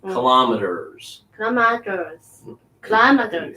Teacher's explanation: Kind of make that T a little D.